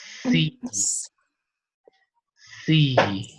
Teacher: So the S, as in Spanish, is alveolar, fricative, and unvoiced. But imagine that the same one, you add the vibration.